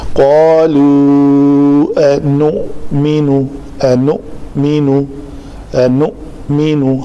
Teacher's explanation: حمزہ کے اوپر جزم ہے تو اس کو جھٹکے سے ادا کریں گے. قالوا نؤمن، نؤمن، نؤمن، حمزہ کے اوپر، حمزہ کو عین نہیں بنانا.